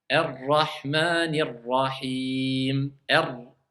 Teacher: C'est-à-dire on le roule un tout petit peu, le ra, mais très légèrement. Et il faut que l'extrémité de la langue touche le haut du palais. Et on sort le R.